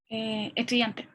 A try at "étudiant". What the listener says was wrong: Étudiant. No se pronuncia la S. Ni la T tampoco. Étudiant. La T me la pronuncia si es femenino, ¿ya? Pero no es masculino.